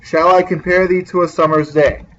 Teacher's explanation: a pattern of five pairs of unstressed and stressed syllables in each line